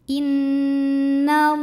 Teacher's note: Lam pada lafaz Allah dibunyikan secara tafkhim karena huruf sebelumnya fathah, maka bacanya tebal